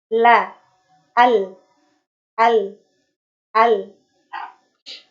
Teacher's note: Makhraj huruf lam itu adalah tepi lidah bagian bawah hingga ujung yang bertemu dengan langit-langit